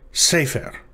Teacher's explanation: So in this case, the tonic syllable is se rather than fer, sefer. The pre-tonic syllable precedes the tonic one.